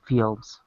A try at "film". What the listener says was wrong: Be careful of the long E short. I'm sorry, long I short I. Film. Sheep ship. Film. Film. It was a little bit of a long I.